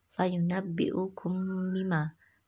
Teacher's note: ikhfa syafawi, mim sukun bertemu huruf ba